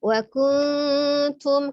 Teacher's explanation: Wa kuntum ya, ada nun sukun bertemu dengan huruf ta, hukumnya adalah ikhfa, samar ya, disamarkan mendekati huruf ta, nun sukunnya, kemudian disertai dengan dengung ya. Jadi samar, ikhfa itu samar tapi disertai dengan dengung.